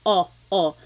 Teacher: Sometimes I think of it like having a ball in your mouth. Your tongue gets kind of pushed back and down a little bit, and the inside of your mouth is open and wide. So O, like opo, opo.